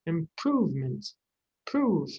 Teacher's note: Prove, this middle syllable, prove, the oo is stressed.